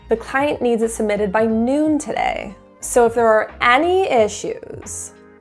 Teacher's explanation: notice the downward intonation indicating confidence and authority.